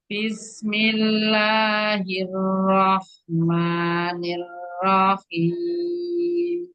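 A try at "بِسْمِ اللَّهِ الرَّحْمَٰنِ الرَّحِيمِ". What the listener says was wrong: Nirohim. Ro-nya jangan panjang. Nirohim.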